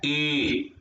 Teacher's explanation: ए की आवाज आ रही है कंठ और तालु से, ए की आवाज आ रही है कंठ और तालु से, ए मतलब कंठ और तालु की आवाज।